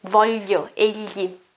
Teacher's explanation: you move your tongue backwards and the back side of your tongue is between your back teeth, okay? And when you're in that position, you let the air flow, okay, blow, okay, and go outside. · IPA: /ʎi/